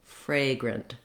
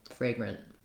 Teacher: Fragrant. So lengthen your fray syllable and then go very short and light on your grunt syllable, fragrant. You may notice that sometimes I don't say fragrant with a strong released T at the end. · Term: schwa